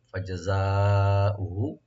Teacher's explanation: হামজার উপরে কোনো টান নাই, হাতে টান আছে খালি